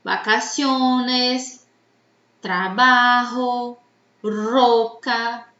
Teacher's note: nessas palavras a sílaba mais forte é a penúltima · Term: grave